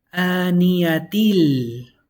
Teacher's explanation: How you combine it is that if you don't want to stop at this symbol right here, you're going to say aniyatil. You're not going to pronounce the noon.